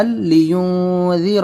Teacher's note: اخفا کریں گے نون ساکن کے بعد میں ذال ہے